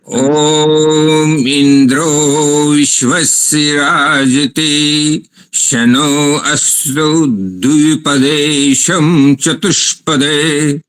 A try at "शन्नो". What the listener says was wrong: यहाँ तो स्पष्ट ही दो नकार दिख रहे हैं इसमें। शन्नो, यहाँ तो स्पष्टता से ही शन्नो ही उच्चारण होना चाहिए।